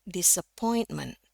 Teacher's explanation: Sementara ini disappointment yang naik itu di point-nya.